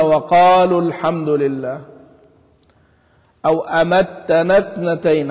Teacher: حرف المد يسقط بالسكون، لأنه لا يلتقي ساكنا